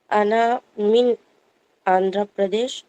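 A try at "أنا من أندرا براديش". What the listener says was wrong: من آندھرا بردیش اور برادیش. آندھرا برادیش. برادیش. ہاں پی جو ہو وہ بی سے بدل جائے گا.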